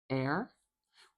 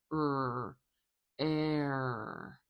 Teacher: We want to make sure we use this turned R for the rhotic sound. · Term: rhotic vowel